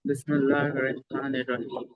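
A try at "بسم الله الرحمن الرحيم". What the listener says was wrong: جلدی کا کام. جیسے ہم نے آپ کو پڑھایا تھا ویسے آپ نے پڑھنا ہے. بسم اللہ. جلدی نہیں، آرام سے. بسم اللہ. جلدی نہیں، بہت آرام سے. بسم اللہ الرحمن.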